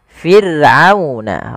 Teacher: ada huruf ra yang didahului dengan huruf kasrah, maka ra-nya tipis, tidak boleh dibaca tidak, tapi fir'auna, ra-nya tipis, kita namakan dengan ra tarqiq.